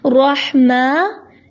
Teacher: میم کے اوپر کھڑی زبر ہے تو اس کو لمبا کریں گے لیکن زیادہ لمبا نہیں کریں گے